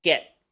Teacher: la e se pronuncia como una e del español pero más larga si se dan cuenta no suena get suena get